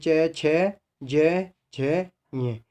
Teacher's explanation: जो हमारी प्राणवायु है या श्वास है वो कहाँ से बाधित होती है, हमारे तालुए के द्वारा बाधित होती है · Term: तालुव्य ध्वनि